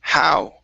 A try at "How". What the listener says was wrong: Okay, now less of an H sound. Now you're saying haul.